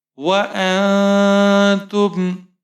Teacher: حمزہ کے اوپر زبر ہے، نون ساکن ہے، آگے حروف اخفا میں سے تا ہے، تو یہاں پر ہم نون پر اخفا کریں گے. تا کے اوپر پیش ہے، میم ساکن ہے، میم کا اظہار ہوگا.